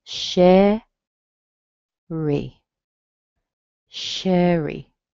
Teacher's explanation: It means that you're going to hear a nice strong vowel in the beginning, and you're going to hear a weak vowel in the end, and a weak vowel in most cases, with a very few exceptions, are either going to be an sound or a tiny e sound. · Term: little tiny e sound